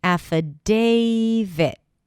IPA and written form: æfəˈdeɪvɪt (affidavit)